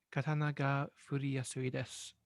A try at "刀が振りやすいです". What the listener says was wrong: No, it's good. It's good.